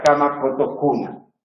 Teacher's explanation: C, ante A o U, es la velar oclusiva sorda